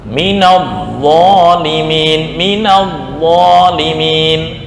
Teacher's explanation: Perbedaan untuk zal dan dha. Dha itu lidah yang tengah naik ke atas.